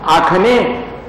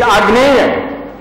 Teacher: The G is pronounced there as Kha.